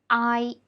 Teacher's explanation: the tongue position is actually higher than we pronounce the simple final ah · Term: compound finals